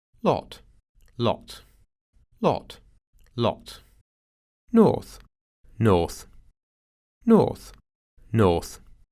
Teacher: Эти гласные, наоборот, стали более закрытыми, то есть рот открывается не так широко, как для консервативного ААП. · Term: задние гласные